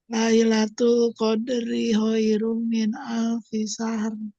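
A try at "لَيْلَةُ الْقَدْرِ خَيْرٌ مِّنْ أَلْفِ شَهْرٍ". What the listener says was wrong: Ya, maksimalkan gunnahnya. Khairum min alfi syahr.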